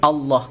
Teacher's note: lafadz Allah didahului oleh harokat fathah maka dinamakan tafkhim bacaannya harus Allah tebal